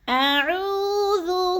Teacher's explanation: واو ساکن سے پہلے عین کے اوپر پیش ہے، تو واو مدہ کو 1 سے 2 الف کے برابر لمبا کر کے پڑھنا ہے